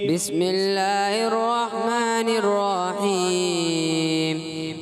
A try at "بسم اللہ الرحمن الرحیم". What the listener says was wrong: ہا کی ادائیگی کلیئر کریں. بسم اللہ الرحمن الرحیم.